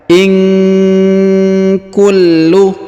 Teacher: huruf nun sukun bertemu dengan huruf k maka kita dengungkan Dan Kita samarkan